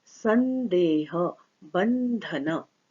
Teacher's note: इस तरह के शब्द की प आने की वजह से यहाँ म हो गया, फ आने की वजह से म हो गया, ध और द आने के कारण से अनुस्वार को न हो गया